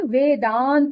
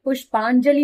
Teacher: अ और अ मिलकर बड़ा आ हो गया। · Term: दीर्घ संधि